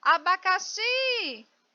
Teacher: Eu começo sempre da direita para a esquerda. A palavra abacaxi, ela não é acentuada, mas eu sei que a sílaba mais forte é xi.